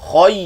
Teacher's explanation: Ya tu bila ya lin turun suara ke bawah.